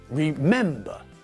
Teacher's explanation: remember has got three syllables but again the stress is not at the end of the word but in the middle